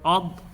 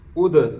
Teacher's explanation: اسی طرح حمزہ ضاد زبر عض، حمزہ ضاد زیر اض، حمزہ ضاد پیش عض اب یہ ضاد جو ہے یہ حروف مستعلیہ میں سے ہے، یہ دال باریک ہے لیکن ہے حروف قلقلہ میں سے ہے، تو ضاد کو موٹا پڑھنا ہے، دال باریک ہے لیکن یہاں پہ قلقلہ ہوگا